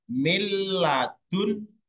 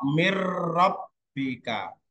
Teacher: Kemudian idgham bila guna, masuk dengan tidak mendengung. Misalnya kata milladunka, nun sukun ketemu lam.